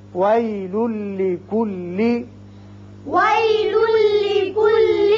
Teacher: لام کے اوپر دو پیش تنوین ہے، اس کے بعد لام آ رہا ہے. یہاں ادغام بغیر غنہ ہوگا، ایک لام پڑا جائے گا